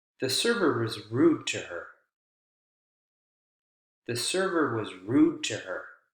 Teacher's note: The focus word is rude there.